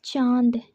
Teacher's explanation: चंद्रबिंदु लगा हुआ है, दंग नहीं है। अनुनासिक ध्वनि में नाक और मुंह दोनों का प्रयोग किया जाता है।